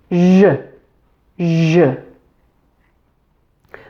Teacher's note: This is just a voiced version of the SH sound.